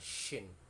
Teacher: membacanya dengan suara yang keras, udaranya dikeluarkan